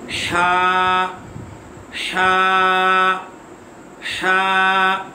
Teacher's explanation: یہ حلق کے درمیان والے حصے سے ادا ہوگا